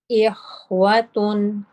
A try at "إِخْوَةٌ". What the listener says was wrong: Ikhwatun. Your ta at the end can be a little bit lighter. Remember, for this ta, we said you use a narrower part of the tongue. So not such a wide area, just press at the top with a narrower area, part of the tip of the tongue.